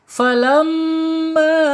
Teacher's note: Ketika ada mim bertasyid ditahan dua sampai 3 harakat. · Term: gunah